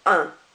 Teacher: you're barely pronouncing that n at the end it's just slightly there